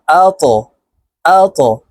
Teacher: ত কলকলার হরফ উপরের দিকে ধাবিত করে ধাক্কা দিয়ে উচ্চারণ করব